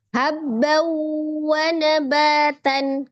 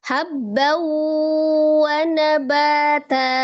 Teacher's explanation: Tapi ketika dia diwaqafkan maka wakaf yang terjadi pada huruf yang berharokat fathah tanwin, maka dia menjadi bunyinya fathah 2 harokat, namanya mad iwad. Jadi dibacanya ketika dia wakaf, habba wa nabata.